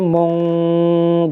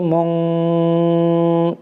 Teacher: বাংলাতে অনুষ্কারের মতো উচ্চারণ করে পড়তে হবে অস্পষ্ট করে গোপন করে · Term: ইখফা